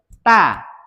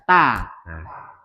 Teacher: lidahnya menempel pada gigi seri atas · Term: huruf ta